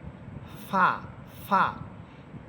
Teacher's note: ফা হরফের মাখরাজ হচ্ছে জিহ্বার ফা হরফের মাখরাজ হচ্ছে সামনের উপরের দুই দাঁতের অগ্রভাগ বা দুই দাঁতের অগ্রভাগ নিচে যে ঠোঁটটি আছে নিচের ঠোঁটের পেটের সাথে লাগবে, অর্থাৎ নিচের ঠোঁটের একেবারে মধ্যখান লাগবে। সামনের উপরে দুই দাঁতের অগ্রভাগ নিচের ঠোঁটের পেটের সাথে লেগে ফা হরফ উচ্চারিত হবে।